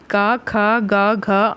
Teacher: कंठ से बोली जाने वाली ध्वनियां हैं